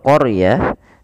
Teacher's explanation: Kemudian pelafal qarah di situ huruf r-nya ditebalkan karena huruf ro yang didahului dengan huruf fathah maka dia kita namakan dengan ro tafkhim harus tebal. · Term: ra tafkhim